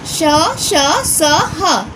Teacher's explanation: जिन वर्णों का उच्चारण करते समय हवा के रगड़ खाने से मुख में गर्मी यानी ऊष्मा उत्पन्न होती है, उसे हम ऊष्म व्यंजन कहते हैं। जैसे बच्चों ऊष्म व्यंजन में श, श, स, ह ये चारों ऊष्म व्यंजन में आते हैं।